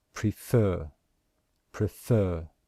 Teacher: Example, the word prefer, can you hear that we stress the second syllable? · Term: stressed syllable